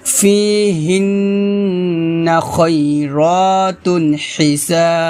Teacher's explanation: হাটা খলকের মাঝখান থেকে চাপ দিয়ে বলতে হবে